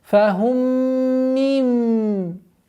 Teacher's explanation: Между двумя полноценными назализациями существует у нас касра, которую нужно четко и ясно произносить.